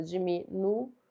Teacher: Diminuiu. Então, é uma oxítona porque a última sílaba é a mais forte e não é acentuada.